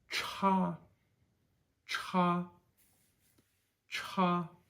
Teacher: CH is very similar to what it is in English just with that more forceful exhale